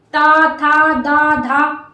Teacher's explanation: जो आपकी जीभ है ऊपर के दांतों में टच हो रही है